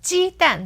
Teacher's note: that's first tone fourth tone